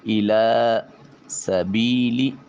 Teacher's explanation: ایک الف کے قائم مقام اس کو لمبا کیا جائے گا۔ الا سبیلی سین حرف صفیریہ ہے، آواز کے وقت سیٹی کی آواز آنی چاہیے۔ دونوں سامنے والے اوپر والے 2 دانت اور نیچے والے 2 دانت یہ آپس میں ملیں گے اور آواز و زبان کے پریشر سے سین کی آواز نکالی جائے گی۔